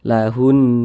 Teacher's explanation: karena di sini huruf nun bertasydid kalau kita lihat di samping Nun bertasydid adalah hukumnya gunah musyaddadah maka cara bacanya itu ya didenggungkan makanya kita gunahkan kita gunahkan kita panjangkan sejenak lahun seperti itu